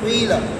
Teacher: اسی طرح قیل کے اندر یہاں پر جو ہے نا کیا نام ہے، انہوں نے اشمام کیا، آپ کو میں نے بتایا تھا قیلہ یعنی زیر میں پیش کا اشمام، زیر میں پیش کا قیلہ، یہ قیلہ اصل میں قویلہ ہے نا، قیلہ اصل میں کیا ہے؟ قویلہ ہے، قاف کے اوپر ضمہ ہے تو اس ضمے کی طرف اشارہ کرتے ہوئے ہونٹوں کو گول کرتے ہیں، قیلہ، بات سمجھ میں آ رہی ہے؟